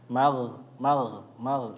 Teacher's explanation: dialirkan jangan kayak g bahasa Indonesia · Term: huruf ghain